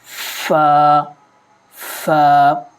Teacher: جب اوپر کے سامنے والے دونوں دانت نیچے والے ہونٹ کے گیلے حصے سے لگیں تو فا ادا ہوتا ہے